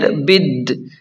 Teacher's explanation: با کو ڈائریکٹ لام کے ساتھ ملا کر پڑھیں گے، یہ بیچ والا الف اور لام نہیں پڑھیں گے